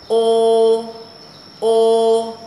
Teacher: chữ o ta không đọc o mà phải đọc là ô Nếu đọc o sẽ sai đọc là ô môi tròn này ô ô đọc lại này ô rồi chữ này nhớ nha